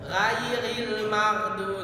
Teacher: mengucapkan huruf ghain keluar dari ujung tenggorokan, pangkal lidah ikut terangkat dia. Oh, jadi suaranya naik ke langit-langit.